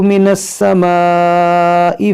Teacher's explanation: अलिफ मद्दा के बाद हमज़ा उसी कलमे में है। तो इसको आप 3-4 अलिफ बराबर खींच के पढ़ें। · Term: मद्दे मुत्तसिल